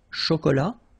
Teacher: And then final T not pronounced.